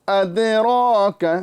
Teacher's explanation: دال کو باریک اور را کو پر